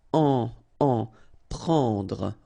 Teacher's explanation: combination of E and N, it's what we call nasal, so it goes in your nose